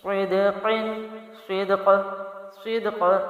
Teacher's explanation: صاد زیر دال صد، قاف دو زیر قن، صدقن صدق صدق. اب یہاں پر میں نے دال بھی ہلا کے پڑھا، قاف کو بھی ہلا کے پڑھا کیونکہ قلقلہ کے حروف ہیں